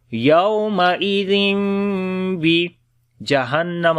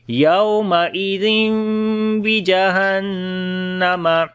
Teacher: نون میم کی آواز کو ناک میں چھپا کر اور نرم پڑھیں گے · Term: اقلاب